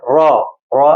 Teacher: را کو بھی زیادہ کھینچنا نہیں ہے اور موٹا بھی پڑھنا ہے. را را الف زبر را.